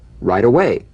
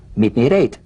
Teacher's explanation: the final T, when it's followed by a word beginning with a vowel, again, it becomes, in effect, a medial T. There's a vowel on both sides of it, so it gets softened to a D.